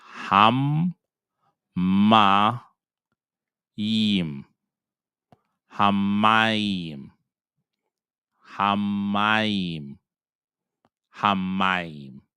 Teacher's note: you're only going to double the sound of the mem. So think about it that you have 2-letter mem here, and one is going to go with this syllables, and one is going to go with this syllables.